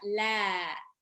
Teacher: lam harokat fathah ketemu alif sukun dibaca 2 harokat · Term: matobi'i